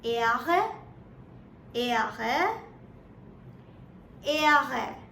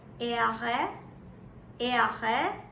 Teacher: the behind part of the tongue touches the upper part of the mouth and then you curl it a bit and speak right through your throat